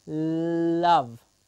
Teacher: tank is going up behind the top teeth hmm and air is passing over the sides of the tongue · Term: lateral sounds